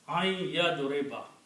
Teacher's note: Then instead of pronouncing an yadribu, we pronounce ain. It becomes noon gunna, comes out from the nose.